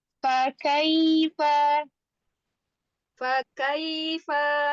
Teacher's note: Perhatikan di huruf iya sukunnya bunyinya harus benar-benar i, jangan imalah.